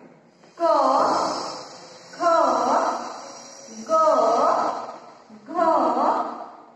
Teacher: जेव्हा आपण क चा उच्चार करतो तेव्हा त्यामध्ये अ ऐकू येतो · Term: व्यंजने